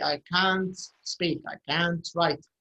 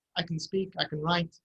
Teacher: Can't is always stressed. So if you say, I can't speak, I can't write, it's stressed.